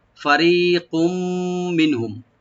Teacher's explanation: ফা ওপেন রাখবেন, রি এক আলিফ টানবেন একদম পাতলা করে। আর কাফের উপরে যে তানবিন আছে, তানবিনের উপরে যেহেতু মিম আছে এখানে ইদগাম উইথ গুন্না হবে।